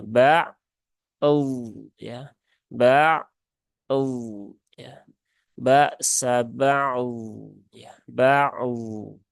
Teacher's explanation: Tidak ada kolkolahnya di sini. Dan jangan sampai berubah menjadi huruf T.